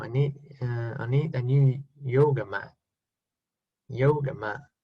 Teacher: Okay, so in this case, Northern Irish, they take away the T.